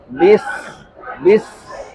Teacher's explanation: Kenapa suaranya berdesis? Karena sempitnya rongga ya sebagai akibat menutupnya permukaan gigi seri atas dan gigi seri bawah. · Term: Sofir